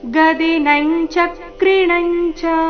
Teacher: ಮುಂದಿನ ಎರಡು ಅನುಸ್ವಾರದ ಉಚ್ಚಾರ ಚ ವರ್ಗದ ಅನುನಾಸಿಕದ ರೀತಿ